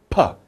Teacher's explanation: there's no air going through your lips are closed tight